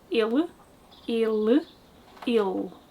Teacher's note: we don't really pronounce the E's at the end of words, so that L actually becomes a dark L, because it's at the end of a syllable.